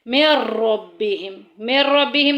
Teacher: तो यहाँ पे जो है वो बिला गुन्ना हो रहा है, लाम और रा में बग़ैर गुन्ने के मिलाएंगे